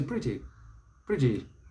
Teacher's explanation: the stress is on the first syllable in both cases